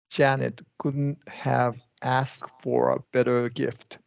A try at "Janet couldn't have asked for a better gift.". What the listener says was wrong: Outstanding. Yeah, good.